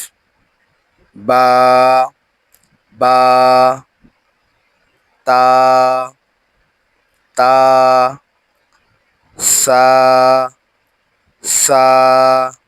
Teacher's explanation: বা, তা, সা, এই তিনটাতেই একালিফ করে টান হবে।